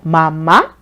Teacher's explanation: The importance or relevance is being expressed by raising your tone. That you're expressing that, it's important that whatever you're calling. · It ends with a high tone for a reason. The importance or relevance is being expressed by raising your tone.